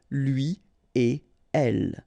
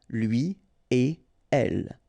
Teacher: So after this conjonction et, like we've got here, you don't make any liaison. So no links after et.